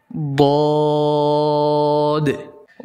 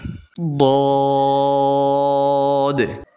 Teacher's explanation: ضاد উচ্চারণের সময় জিহ্বার গোড়ার কিনারা মারির দাঁতের গোড়ার সাথে লাগবে, উপরের মারির দাঁতের গোড়ার সাথে লাগবে।